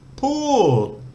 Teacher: This is the Thai word to speak or to talk. It has a falling tone. Poor. So it's got the por pan initial consonant, which is low class.